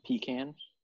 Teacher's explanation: pronounced with like an emphasis in the first syllable